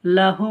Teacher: উল্টো পেশকে ওয়া মাদ্দার মতো এক আলিফ পরিমাণ টান দিয়ে পড়তে হয়।